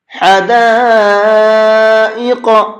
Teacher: شروع میں ہا ہے، اس کو حلق سے نکال کر کے پڑھیں گے